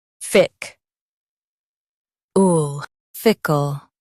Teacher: Say fickle with a strong fic and soft ul. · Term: strong fick